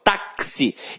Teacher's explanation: Então, o X aqui tem som de KS. Ou seja, uma letra tem 2 sons. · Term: dífono